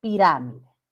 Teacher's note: esdrújula o proparoxitona el acento recae en la antepenúltima sílaba